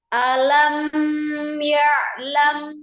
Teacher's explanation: Mim sukun ketemu dengan ya-nya izhar. Tidak ditahan.